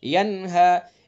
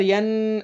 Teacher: نون ساکن کے بعد ہا ہے تو اس لیے اس کے اندر اظہار ہوگا، اپنے مخرج سے بغیر غنہ کے نکالیں گے، ینہا، اس کے اندر ین ایسے نہیں کریں گے، ینہا، ٹھیک ہے؟